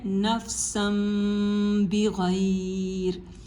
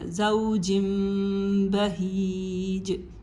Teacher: جب بھی تنوین کے بعد با ہو یا نون ساکن کے بعد با ہو، ہم اس کو میم کے اندر چینج کر دیں گے، اور پھر وہ ایک جو نہ وہ ادغام اور اخفا کے درمیان کی جو آواز ہے اس کے ساتھ اس کو پڑھا جاتا ہے. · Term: اقلاب